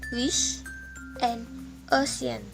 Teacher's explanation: Langit-langit lunak terangkat, gigi cukup rapat, dan tidak ada getaran di pita suara